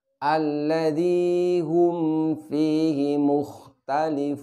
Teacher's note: Di sini kita perlu berhati-hati dikarenakan mim dengan fa makhrajnya berdekatan. Di mana mim makhrajnya adalah cara mengucapkan dengan merapatkan kedua bibir, sedangkan fa yaitu dengan menyentuhkan bibir bawah dengan gigi seri atas kita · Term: mim sukun